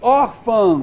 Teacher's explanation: veja só que a nasal não é a tônica.